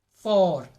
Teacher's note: the tongue is in the back of the mouth it has a backward shift a backward movement